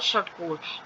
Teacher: मूर्धन्य श जो है वह तालु के पिछले भाग से बोला जाता है। जैसे गहरी भारी ध्वनि है और षट्कोण।